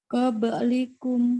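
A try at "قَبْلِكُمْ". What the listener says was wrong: Tanpa putus boleh? Qabli putus. Qablikum.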